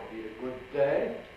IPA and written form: ə ˈgʊd̚ ˈdeɪ (a good day)